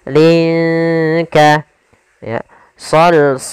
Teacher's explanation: Sama hukum tajwidnya, yaitu ikhfa. Cara membacanya samarkan linnya ke huruf kaf.